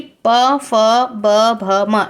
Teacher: इसे आप ओष्ठ ध्वनियों के नाम से भी जानते हैं, जो कि आपके सिर्फ होंठ से निकलती है, जैसे कि प, फ, ब, भ, म।